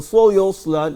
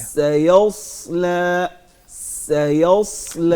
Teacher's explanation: سین باریک ہے, اس میں زبان کے پچھلے حصے کو نیچے رکھیں گے.